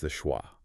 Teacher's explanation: The jaw drops slightly. The lips remain neutral and the tongue rests flat right in the middle of the mouth. It is the absolute zeroeffort position of the human vocal tract.